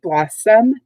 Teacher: notice if we look at the pronunciation key blossom two syllables loss is the stress syllable it gets a little more inflection